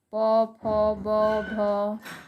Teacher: ओष्ठ, ओठ के द्वारा जो हम बोलते हैं। प वर्ग, प, फ, ब, भ, ये सब ओष्ठ के द्वारा बोला जाता है।